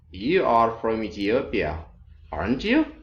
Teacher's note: falling intonation now which means you are fairly sure of the information · many people ask where is the stress in question tags. It's on the verb.